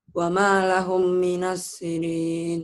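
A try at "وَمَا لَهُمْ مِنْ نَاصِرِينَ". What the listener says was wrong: Bukan. Wa ma lahum min. Ini idgham ya, nanti kamu belum belajar nun matinya. nanti nun mati ketemu nun ditahan. Wa ma lahum min nasirin.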